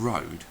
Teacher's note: are quite weak plosives or half aspirated that is to say the r in Road doesn't build up and release Air quite in the same way as the other plosives